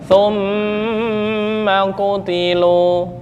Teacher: Mim gunnah ya. Gunnah ditahan 2 ketukan.